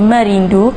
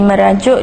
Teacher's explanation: Rumus berikut menjelaskan bahawa segmen nasal vela ngeh digugurkan apabila diikuti konsonan sonoran di sempadan awalan